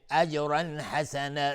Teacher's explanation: اجرا حسنا جیم قلقله میخواد